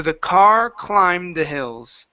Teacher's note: so don't finish the D sound. Okay, move right into the TH.